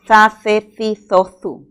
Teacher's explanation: Es un sonido fricativo interdental.